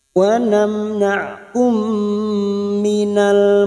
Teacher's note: bertemunya dua huruf mim masuk pada huruf mim berikutnya dan mendengung selama 3 harokat, 3 atau 2 harokat. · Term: idgham mimi